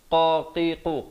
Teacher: qaf makhrajnya di pangkal lidah